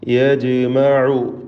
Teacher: ജീമിൻ്റെ സുക്കൂൻ ഖൽഖല സുഗ്റ നൽകി ശബ്ദം ചലിപ്പിച്ച് ഹറക്കത്ത് പോലെ വ്യക്തമാക്കണം.